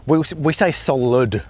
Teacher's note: if we have a word with two syllables that has an I in the second syllable, for example, solid, we say solid. We don't really say the I